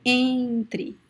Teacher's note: if you touch your nose you see that it vibrates a lot when you say the word entry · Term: nasal